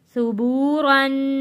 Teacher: را کو موٹا پڑا ہے اور غنہ کیا ہے را کے اوپر، کیونکہ را کے اوپر 2 زبر ہے، 2 زبر کے اوپر ہم نے غنہ کر کر پڑھنا ہے۔